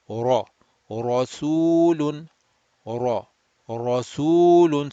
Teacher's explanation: I am humping the tongue in the back. I am raising the back of the tongue up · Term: rounded